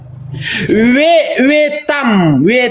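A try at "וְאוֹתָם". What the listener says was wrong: Salah, veotam. Ini veotam bukan vetam, bukan veotam nih, ada yud di atas.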